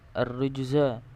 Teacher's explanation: Ar-rujza ini hukum bacaannya di situ adalah qalqalah sughra, yaitu adalah pantulan kecil